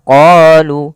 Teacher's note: Pada lafal bacaan qalu da'u lana, kita memanjangkan huruf qa sepanjang 2 harakat karena pada lafal qa ini ada bacaan mad tabi'i. Kita lihat di sini adanya huruf qaf pada huruf qaf ada harokat fathah bertemu dengan alif.